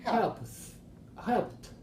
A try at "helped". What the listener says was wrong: Helped. Yes, very good.